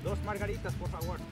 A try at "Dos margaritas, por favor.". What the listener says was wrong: Now, you gotta roll your R's.